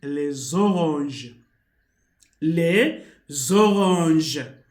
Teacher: Then from S, there is an O. When an S is between the vowels, it changes the sound to Z. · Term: liaison